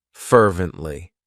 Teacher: it has three syllables and the stress is on that first syllable